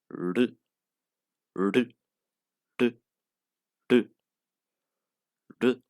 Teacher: And then there's our small R, that it is not performed like in English, like any word, real, work. It is basically a flip, like a rolling R, but we don't actually roll, it just flap once.